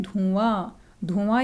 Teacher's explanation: धुआं यानी कि नाक और मुंह दोनों से आवाज़ आ रही है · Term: चंद्र बिंदु